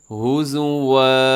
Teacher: قالو ان تتخذنا، لفظ تھوڑا سا مشکل ہے، اتتخذنا ہزوا، ہزون لکھا ہوا ہے 2 زبر پہ، جب بھی آپ وقف کریں تو 2 زبر کو وقف کرتے ہوئے الف مدہ کی طرح کھینچ کے پڑھنا ہے